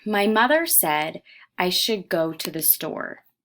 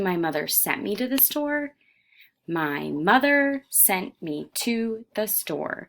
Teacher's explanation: We're back to our unstressed, stress, unstressed, stress, unstressed, stress.